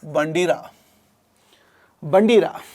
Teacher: నాలుక యొక్క కొన దంత మూలాన్ని కంపింపచేసినప్పుడు జరిగేటువంటి ప్రయత్నమే కంపిత ప్రయత్నము.